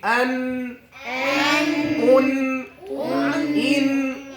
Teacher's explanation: When we pronounce the noon, we touch the gum and we make ghunna. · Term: noon sakina